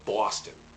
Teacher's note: the thing about Boston accent is that you don't say Boston the o sound is more like an aw